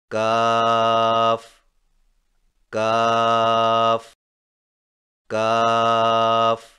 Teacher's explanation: کاف کی ادائیگی میں زبان کی جڑ کو کوے کے قریب تالو پر لگا کر باریک آواز میں پڑھیں، یعنی کاف کاف کاف۔